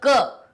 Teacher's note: क जैसे ही बोलोगे अ उसमें अपने आप ही स्वतः निकल के आ जाएगा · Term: व्यंजन